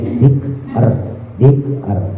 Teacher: Kalau nggak bisa bikr nggak apa-apa ditebelin, tapi kalau bisa kafnya jangan sampai mantul, jangan bike, jangan ada e-nya